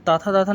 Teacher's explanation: दंत मतलब दांत जिसमें टच कर जाए बोलते समय। जैसे ता बोलोगे तो जीभ से दांत टच करेगा ना